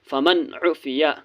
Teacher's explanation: فا زبر فا، میم نون زبر من، فمن، عین پیش عو، فا زیر فی، عفی، یا زبر یا، فمن عفیا، نون ساکن کے بعد عین ہے، عین حرف حلقی ہے اس لیے نون کو ظاہر کرنا ہے۔